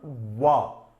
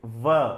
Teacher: Bilabial, wa. Labiodental, v.